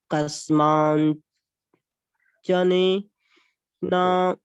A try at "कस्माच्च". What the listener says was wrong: नहीं, वहाँ अनुनासिक नहीं है, कस्माच्च, कस्माच्च नहीं है, कस्माच्च। कस्मात् नहीं, कस्माच्च। नासिका ना कहाँ है? वहाँ ना नहीं, कस्माच्च।